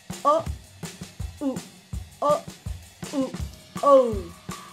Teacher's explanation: My jaw moves, but my tongue stays in the back for both parts of the diphthong. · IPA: /o/ /ʊ/ /o/ /ʊ/ /oʊ/